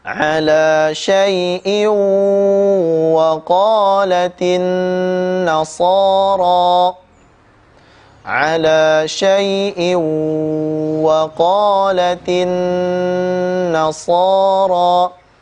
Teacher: Tanwin kasratain bertemu dengan huruf huruf waw, ya. Maka dibaca dengan tempo gunnah yang dipanjangkan